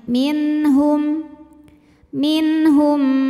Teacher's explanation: Maka nun sukun ini kita bunyikan dengan jelas. Jadi kalau asal bunyi nun sukun itu N, maka akan tetap N dan tidak perlu ditahan ya. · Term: izhar halqi